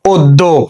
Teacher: দয়ের সঙ্গে জফলা আছে, তাহলে দয়ের দ্বিত্ব উচ্চারণ হবে, আমরা দুইটা দ লিখেছি, যেহেতু এর সঙ্গে কোনো কার চিহ্ন নেই, শব্দের শেষে একটা ওকার যুক্ত হয়ে যাবে, উচ্চারণ হয়ে যাবে কি অদ্য।